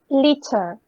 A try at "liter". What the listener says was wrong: Un poquito menos castellana. Digo, liter suena muy I en el medio. It's liter, liter, liter. Okay, so the first sound is the E. Liter.